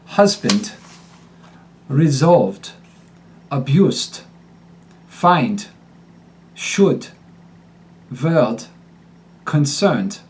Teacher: substitutions as applied to a text the funnel d becomes t when D appears at the end of a syllable it goes from being a voice D to an unvoiced t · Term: The final D becomes T